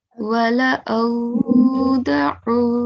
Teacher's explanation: Ain comes from the middle of the throat.